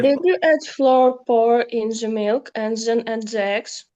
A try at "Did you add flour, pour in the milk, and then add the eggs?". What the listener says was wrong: the way you read was not clear. No, you've got to say, there's a comma. You know comma? You've got to pause. Did you add flour, pour in the milk, and then add eggs?